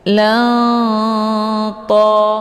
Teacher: Cara bacanya, tanwinnya disamarkan kemudian siap-siap menuju ke huruf ta. Hukum bacaan ikhfa awsat dibacanya sambil didengungkan.